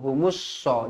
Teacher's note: alif lam syamsiyah ada sabdu, jadi bacanya humus so